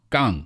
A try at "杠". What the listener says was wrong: G sound, not the K sound.